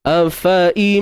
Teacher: Kemudian kita memang kena dengunglah, nama pun bi gunnah. Didengungkan dengan kadar 2 harakat. Kat sini idgham bi gunnah kamil.